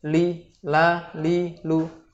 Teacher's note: secara umum memiliki kondisi lam istifal atau tipis